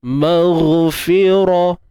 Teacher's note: Untuk huruf ghain ni dia bersifat rakhawah, iaitu suara yang mengalir.